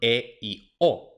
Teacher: para pronunciar E y O, la lengua sube un poquito más que en la A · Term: vocales medias